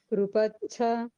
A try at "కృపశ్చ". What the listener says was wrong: శా కూడా పలకాలండి, కృపశ్చ